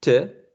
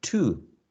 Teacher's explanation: you can find speakers saying te with a schwa more than the ones that say to, unless you are stressing the idea